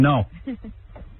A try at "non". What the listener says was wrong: But you're not saying it right. It's no. You've got to get nasal with it.